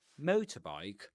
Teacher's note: the accent falls on the stressed syllable of the first item motor